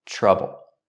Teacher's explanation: Linked to the TR sound, we use the ch sound like chicken, plus the R